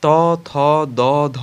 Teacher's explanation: এই ধ্বনিগুলো উচ্চারণের সময় জিহ্বা সম্মুখে প্রসারিত হয় এবং অগ্রভাগ উপরের দাঁতের পাটির গোড়ার দিকে স্পর্শ করে। এদেরকে দন্তধ্বনিও বলা হয়।